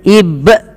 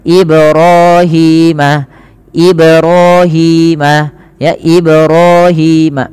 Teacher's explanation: Harusnya dipantulkan dan tidak menambahkan hamzah. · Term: qalqalah